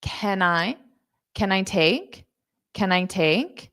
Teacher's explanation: notice that can will be very fast because it's the auxiliary verb